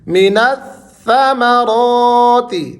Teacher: را کو آپ نے کھینچ کر اور موٹا کر کے پڑھنا ہے